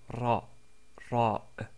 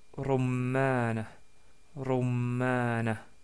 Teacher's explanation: Nous avons vu la lettre Ra qui, comme nous l'avons dit, est comme si un R roulé, comme c'est prononcé en italien ou en espagnol. Donc c'est Ra, Ra.